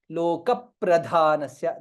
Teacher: there is A slightly stress on ಪಕಾರ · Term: ದ್ವಿತ್ವ